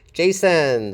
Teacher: It starts with an affricate, a voiced affricate, and Jason. The stress is on the first syllable. Jason. So the second syllable is unstressed, and we have a schwa there.